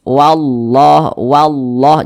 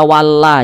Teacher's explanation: maka lafaz Allahnya dibaca tebal dibaca tafkhim